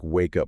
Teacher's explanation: more natural got it for example in the phrase wake up we link the k sound at the end of wake with the u sound at the beginning of up so it sounds like wake up almost like one word exactly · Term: linking